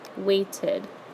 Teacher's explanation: when you add ED on the end of the word, we're looking at the word waited. You hear id at the end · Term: id sound